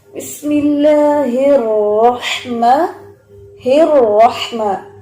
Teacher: آپ پڑھتے ہیں بسم اللہ الرحمن الرحمن، کیوں آپ کو کہا جاتا ہے بسملہ کے اوپر کہ رحمان میں را کے اوپر زبر بھی ہے اور اس کے اوپر تشدید بھی ہے، تو یہاں اس کی جو تفخیم ہے، موٹائی ہے، وہ نمایاں ہونی چاہیے